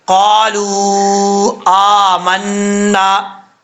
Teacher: پڑھا جائے گا، آگے 1 الف کی مقدار لمبا کریں گے، لام کے بعد واو ہے، مد منفصل ہے، واو کے بعد اس کو 2.5 الف کے برابر لمبا کیا جائے گا